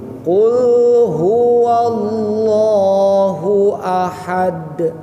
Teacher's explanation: baru ha kecil tengah tenggorokan